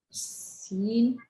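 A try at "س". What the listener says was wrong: Yep, exactly. So this is seen.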